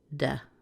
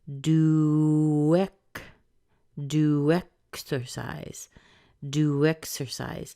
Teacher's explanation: say the original vowel in there, which is the oo, but we still soften the T, so we get a tiny little do. If we do that, you're going to hear a bit of a connection sound between this W and the E, which gives us do exercise, do exercise.